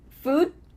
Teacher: What happens to that final D? We just cut it off. Food, and we're cutting off the next D.